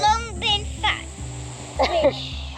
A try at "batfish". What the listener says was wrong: Bat fish. It's not a fat fish, it's a bat fish.